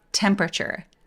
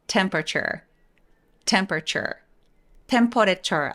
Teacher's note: 강세는 이음절에 오니까요. 소리는 앞으로 밀어서 강세 주세요. temperature 목소리 올리지 말고 temperature.